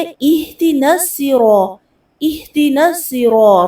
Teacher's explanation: اب اہدنا الصراط میں کیا ہے، ایہی اکثر کیا پڑھتے ہیں، اہدنا الصراط، اہد نہیں ہوتا بلکہ کیا ہوتا ہے، اہدنا الصراط، ہا کو عکس حلق سے ادا کرنے اور دال دے نہیں پڑھنا بلکہ دی، اہدی، نون کو صاد سے ملانا ہے، اہدنا الصراط، صاد کو پر کر کے پڑھنا ہے، سین اکثر کیا پڑھتے ہیں